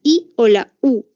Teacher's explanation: no tienes que abrir toda la boca para poder pronunciarlos o vocales cerradas como la i o la u en donde la boca se abre muy poquito